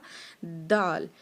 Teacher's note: آگے ہے جی لفظ دال، جیسے ہم نے لفظ ادا کیا تھا تا، یہ بھی سیم اسی جگہ سے نکلتا ہے، ٹھیک ہے۔ جیسے ہم نے تا کی آواز نکالی تھی زبان ٹچ کر کے آگے والے دانتوں کو، اسی طرح سے نکلے گا دال